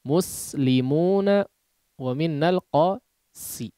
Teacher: Sin ini tipis ya sebetulnya sama dengan huruf shod pengucapannya bedanya tebal dan tipisnya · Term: huruf Sin